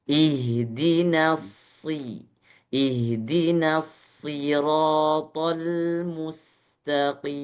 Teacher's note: Sod ketika berharokatnya kasroh maka jadi sedikit tipis. Memang sod huruf tebal, tapi ketika dia harokatnya kasroh sedikit tipis.